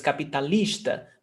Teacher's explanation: The stressed syllable is on lis.